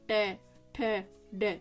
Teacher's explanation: अब मुर्दा से कौन सा बोला जाएगा ट ठ ड देखो तालू से पीछे लेकिन कंठ से ऊपर बीचोबीच आया ना इसका यानी कि एकदम जीभ के नीचे से